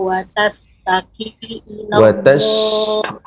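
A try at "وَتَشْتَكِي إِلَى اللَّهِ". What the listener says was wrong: Shinnya lebih disebarkan. Wa tashtaki, kemudian rang bawah diturunkan. Wa tashtaki ilallah.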